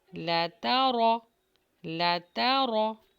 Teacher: لام کو باریک پڑھیں گے، تا بھی باریک ہوگا اور رو ہیوی ہوگا